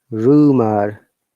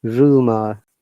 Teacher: R at the beginning we are pronouncing, but the last R is not pronounced.